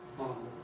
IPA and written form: ˡbɑːt̬l (bottle)